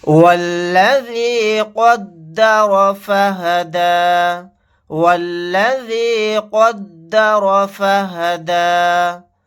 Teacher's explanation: واو کو ڈائریکٹ لام کے ساتھ ملائیں گے، الف نہیں پڑھا جائے گا۔ قاف کو اور را کو یہاں پر موٹا یعنی پر پڑھیں گے۔